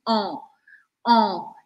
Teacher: esse som on que é parecido com an da gente só que ele é um pouquinho mais aberto Como se eu tivesse uma batata quente na boca oh eu